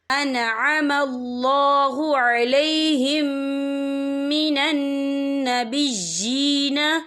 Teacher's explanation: میم ساکن کے بعد جو ہے میم مشدد والا حروف آ رہا ہے، تو یہاں پر ادغام شفوی ہوگا، ہم پچھلے میم کو اگلے میم میں مدغم کریں گے اور ہم یہاں غنہ بھی کریں گے